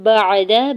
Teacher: با کے زبر کو عین ساکن کے ساتھ ملاتے ہوئے پڑھنا ہے، دال کے زبر کو بغیر کھینچے ہوئے ادا کرنا ہے